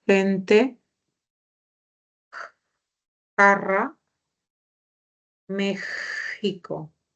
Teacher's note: Y esa X, esa fricativa que es la X, corresponde al sonido de la G, al sonido de la J y al sonido de la X